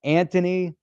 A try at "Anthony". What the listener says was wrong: Anthony. There's no th in there. There's no H. It's Anthony. There's no TH. It's Anthony. That's how New Yorkers call anybody named Anthony. Is Anthony.